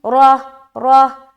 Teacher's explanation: راہ کو موٹا رکھ کے ہا کی ادائیگی بھی ہونی چاہیے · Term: ہائے ساکینہ